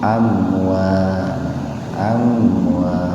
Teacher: Kalau yang tadi mim mati ketemu hamzah terpisah, kalau yang ini mim mati ketemu wawu dalam satu kata, dibaca idhar tapi sepintas aja